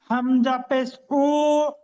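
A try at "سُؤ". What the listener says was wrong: হামজা টান হবে না।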